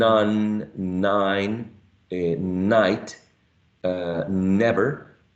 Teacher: tongue is raised uh against the AL Ridge right Ridge and you will also perceive that your uh nose is vibrating because of the passage of the Airstream · It's a voiced alveolar nasal sound. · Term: voiced alv nasal sound